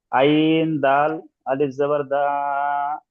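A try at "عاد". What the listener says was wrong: আইন দাল আলিফ নয়, আইন আলিফ দাল যাবার আদ।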